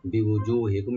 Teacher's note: আর মিম সাকিন এখানে জাহার করবো আমরা, এটা গুণা হবে না